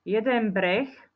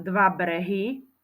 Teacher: Jeden breh, vyslovujeme to na konci s písmenkom so spoluhláskou ch.